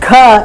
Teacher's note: Gha again aspirated velar sound